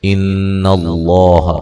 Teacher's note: ان اللہ، نون مشدد پہ غنہ ضروری ہے، لفظ اللہ کو موٹا ادا کریں گے، اس سے پہلے زبر ہے